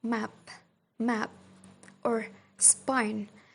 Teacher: Pause, they are puff of air, while p in final position like map, map, or spine after s sound, they are unaspirated sounds